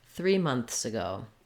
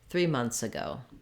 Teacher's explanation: If you find this challenging, months, you can use the cheat of leaving the TH sound off and just going directly from your N to your S sound